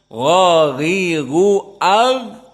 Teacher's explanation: tidak ada nafas yang keluar namun di saat dibaca AG di situ suaranya keluar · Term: jahr, rokhawah